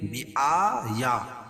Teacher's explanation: کھڑا زبر قائم مقام الف مدہ کے اس کو ایک الف کے برابر کھینچ کے پڑھیں گے